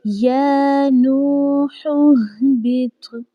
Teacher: پہلے ہم نے آواز کو اوپر لے کے آنا ہے ہا کی ادائیگی کرنے کے لیے، پھر ہم نے نیچے تھوڑا سا گرانا ہے تاکہ ہا کی بھی ادائیگی اچھے سے ہو سکے۔